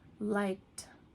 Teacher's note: Okay, so what you're doing is you're just switching out that ED for really like just a D or a T sound, okay? So liked, liked really sounds more like a T at the end, and the E, you don't really hear it.